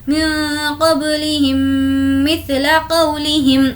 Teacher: यहाँ पर हमें गुन्ना करना है क्योंकि मीम साकिन के बाद मीम है, तो इसको हम इदगाम शफ़वी कहते हैं।